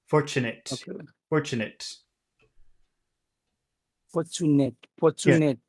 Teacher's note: all the all the energy is on four four and there's nothing there's nothing in Chinet it's just a small